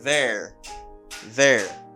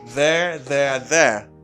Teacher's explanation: Remember, I have voiced TH here. Moi, j'ai un TH qui voisé. Ça veut dire un TH qui a une vibration là-dedans. I say there, there.